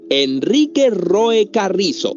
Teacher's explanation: la R la pronuncias con la punta de la lengua en la parte anterior del alveolo dental. Entonces es una vibrante alveolar sonora